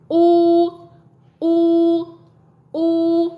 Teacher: âm u dài thì mình phát giống âm u của tiếng Việt nhưng mình kéo dài ra